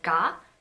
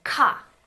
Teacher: feel that the vibration comes a bit later on that's because G is a voiced consonant whereas K is not it's an unvoiced consonant · when you say kah you're going to notice that there is a burst of air coming out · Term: aspirated